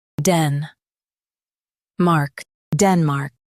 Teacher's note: Stress den and keep mark clear.